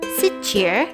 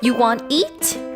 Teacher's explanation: utter the expression with a rise in intonation toward the end